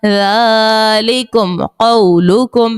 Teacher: میم ساکن کے بعد با اور میم کے علاوہ قاف ہے، اظہار شفوی کا قاعدہ ہوگا اور غنہ نہیں کریں گے